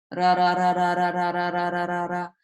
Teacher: It's almost like a D, but it's much lighter because it's not behind the teeth that you're hitting your tongue. It's actually the roof of your mouth. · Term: letter ra